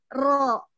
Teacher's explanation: Jadi mengalirnya ro, dia mengalir sedang. Tapi dengan cara bergetar ujung lidahnya. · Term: sifat at-takrir